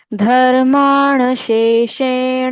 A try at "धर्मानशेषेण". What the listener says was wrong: यहाँ पे धर्मान, पहले नल का न, शेषेण, फिर बाण काट दो। धर्मान शेषेण। डिफरेंस है न और न में, तो वो दोनों यूज करना है यहाँ पर। श्रुत्वा धर्मान शेषेण